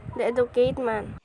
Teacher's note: Again, the learner omitted T sounds in educated.